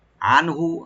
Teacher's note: আনহু আইনটাকে রাইট দিবেন, নুন সাকিন এখানে জাহার হবে। আনহু হাতে কোনো টান নাই।